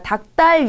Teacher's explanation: 기역으로 대표음으로 소리가 나서 닭달이 되는 건데요. 기역과 디귿이 만나면 뒤에 소리가 된 소리로 뜨 소리가 납니다.